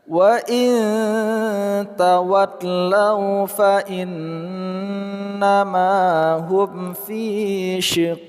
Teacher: terus setelahnya kita sukunkan huruf qaf dan terletak pada akhir kata qalqalah kubra, pantulannya kita kuatkan